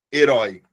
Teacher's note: Porque é oral e é aberto. Beleza? Mas eu também posso ter os ditongos que são fechados.